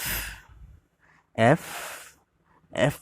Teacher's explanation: দেখুন আবারও, এই, বি, সি, ডি, ই, এফ, এফ, এফ যখন বলবেন আপনারা, এফ অর্থাৎ নিচের ঠোঁটের সাথে উপরের দাঁতের পাটি এসে মিলবে